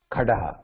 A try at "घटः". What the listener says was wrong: that C that टकार ट sound is not ड घटः